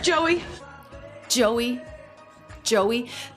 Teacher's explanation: the questioning intonation going up